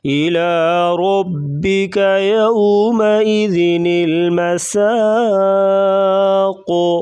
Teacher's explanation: سین سیٹی جیسی آواز اور قاف کو پر پڑھیں گے اور کلکلا کریں گے